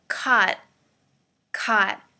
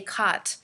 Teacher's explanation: you'll notice i don't say the t sound i don't say kat when we speak very quickly we take